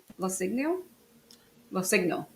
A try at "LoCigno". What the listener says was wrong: Yeah, the G is silent.